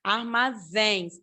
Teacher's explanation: A sílaba mais forte é o zens, armazéns. Aí a gente vai para a regra das oxítonas, porque a última sílaba, né, é oxítona.